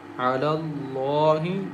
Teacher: Lam has standing fatha, and lam is thick here because it comes after fatha letter.